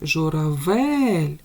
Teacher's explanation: журавель наголошений третій склад